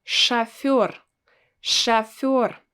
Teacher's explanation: I don't pronounce O as it's written, I pronounce it as A